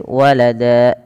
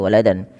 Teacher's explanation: Tanwinnya diganti dengan panjang menjadi seperti mad tabi'i. Maka walada, cara membacanya menjadi walada, bukan lagi waladan. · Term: mad iwad